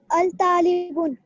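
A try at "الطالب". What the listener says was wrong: at-talibu. बुन नहीं आएगा, ठीक है? तो बुन बू हो जाएगा. एक पेश कट जाएगा जब हम अल ऐड कर रहे हैं.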